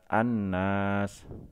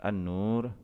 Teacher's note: Contoh pada kalimat annas, alif lamnya tidak dibaca, langsung melebur ke dalam huruf nunnya